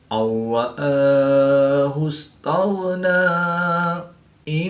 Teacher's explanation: نون ساکن کے بعد را حروف ملون میں سے ہے تو یہاں پر ادغام بلا غنہ ہوگا یعنی کہ بغیر غنہ کے ادغام کر کے پڑھیں گے